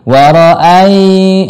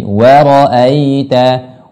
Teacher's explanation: mad lin ketika lin ini ketika di tengah-tengah kata tidak dibaca panjang, cuman tinggal adalah lembutnya. Linu, sifat lembutnya yang tinggalkan.